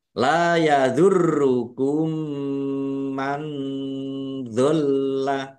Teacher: Mim sukun bertemu dengan huruf mim, idgham mutamasilain atau idgham mimi atau idgham mislain. Dibaca mendengung, ya, mendengung mim ditandai mimnya ada tasdidnya. · Roknya dibaca double, ada tasdidnya, ditekan dan ditahan biar tampak double.